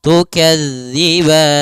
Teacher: hati-hati pada lafal tukadziban di sini jangan dibaca dengan za jangan tukazzi tapi tukazzib panjang ban boleh dua harakat, boleh empat harakat, dan boleh pula en harakat karena dia madrid lukun.